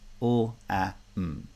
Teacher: So although the word lamb is spelled with four letters, L-A-M-B, there is no b in the pronunciation. It's really just three segments